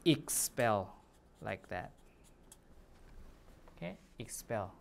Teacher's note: since the stress is on the second syllable here we should pronounce it as expel